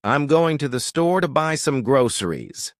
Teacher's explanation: The little words like to, the, and some get reduced and compressed between the stressed words. This creates a natural rhythm that makes English flow smoothly.